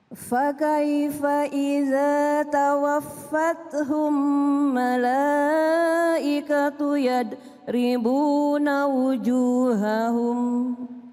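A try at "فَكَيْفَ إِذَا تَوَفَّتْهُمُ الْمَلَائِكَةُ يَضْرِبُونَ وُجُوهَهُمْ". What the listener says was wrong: Iya, bukan tawafathum, tapi tawafathumul, tawafathumul.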